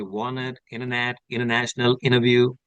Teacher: whenever you have T after an N that become T silence